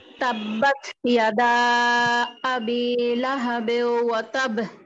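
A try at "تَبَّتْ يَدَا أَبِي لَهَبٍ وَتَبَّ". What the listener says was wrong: বেউ এরকম বাঁকা হলো কেন? বিউ হবে, বিউ। হ্যাঁ, বেউ হবে না, বিউ। একারের উচ্চারণ কোথাও নেই, শুধুমাত্র একটা জায়গায়, বিসমিল্লাহি মাজরিহা, এখানেই একারের উচ্চারণ, আর কোথাও একারের উচ্চারণ নাই, সব ঋষিকার। জি, বিউ বিউ।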